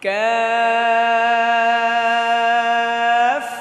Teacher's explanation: কাফ জিহ্বার গোড়া থেকে একটু সামনে সামনে থেকে উচ্চারণটা হবে